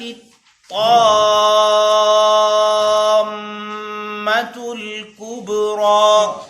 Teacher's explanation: تا کو طا کے ساتھ ملائیں گے اور طا مشدد ہے، یعنی دو حرف کے برابر ادا کرنا ہے اس کو. اسی طرح طا کو جب میم کے ساتھ ملائیں گے تو میم پر بھی شد ہے، میم پر ٹھہریں گے.